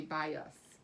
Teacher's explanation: would be a closed syllable but it's not we flex it it's a schwa we say by us it kind of has that uh sound